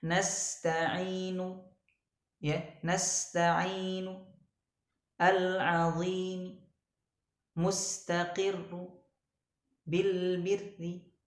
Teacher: Jadi membaca harakat akhirnya itu hanya sepertiganya saja, seperti bacaan ikhtilas. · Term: raum